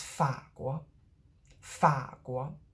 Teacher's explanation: The 国 only rises a little bit.